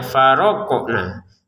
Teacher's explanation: Huruf qof-nya dipantulkan itu harus sempurna ya.